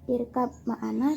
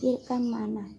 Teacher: dibaca mim karena tadinya irkab ma'ana dibaca jadi irkam ma'ana